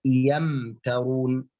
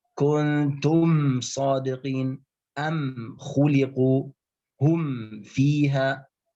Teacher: هذه تسمى الإظهار الشفوي. لماذا سمي شفويا؟ لأن الميم تخرج من الشفتين.